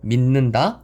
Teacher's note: 왜? 종성에 있는 디귿이 뒤에 이 초성에 나오는 니은의 영향을 받아 비음인 니은이 되는 현상입니다. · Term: 비음화